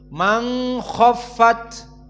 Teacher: Man khofat maka Huna harakatan karena idgham atau Afwan karena ikhfa maka dua harakat makhrajnya dari khaisum